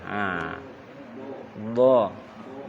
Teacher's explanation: do itu jangan lurus lidahnya. Kalau lurus berarti dal. Lidahnya parkir ke samping. Ke tepi dia. Do. Lalu ujungnya itu ada sebuah tekanan ke atas.